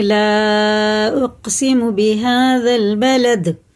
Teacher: دال میں بھی قلقلہ ہے، قاف میں بھی، سخت یعنی اس کے مخرج ٹکر کھا کے الگ ہو جاتے ہیں